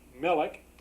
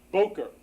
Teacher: the accentation on the first syllable